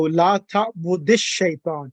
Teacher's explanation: So the sukoon on the last letter changes to a kasra · the lam is silent because it's a sun letter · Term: Iltiqa'u sakinain